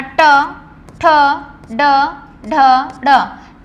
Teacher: मूर्धन्य में हमारी जबान जो होती है वो थोड़ा सा टर्न होती है